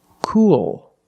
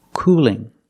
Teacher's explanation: light L because it's between vowels so let's hear the difference cool has a dark L at the end but cooling has a light L